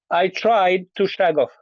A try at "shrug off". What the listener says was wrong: off has to be big